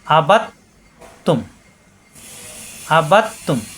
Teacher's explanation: মিলিয়ে পড়লে এখানে কলকলা হবে না, আলাদা পড়লে কলকলা হবে।